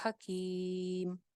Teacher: حکیم کے اوپر آپ مد عارض لگا سکتے ہیں، تو حکیم میں میم کو ہم ساکن کر رہے ہیں، پیچھے آئے مد ہے